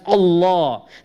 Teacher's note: We're making it ta'zeem and tafkhim. We're making the lam heavier.